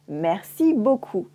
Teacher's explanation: As you can hear, I don't say the P at the end of beaucoup.